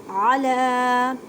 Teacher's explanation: عین کو حلق کے درمیان والے حصے سے ادا کریں، طعام، طا کو ادا کرتے وقت خیال رکھیں کہ تا کی آواز نہ آئے کیونکہ یہ حروف مثقالیہ یعنی موٹے حروف میں سے ہے۔